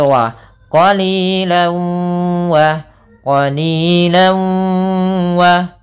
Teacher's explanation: memasukkan Bun artinya disertai dengan gunah maka apa yang dimasukkan adalah tanwin yang dimasukkan ke huruf wau sehingga suara tanwinnya atau suara annya hilang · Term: Idam Bun, idgham bi gunnah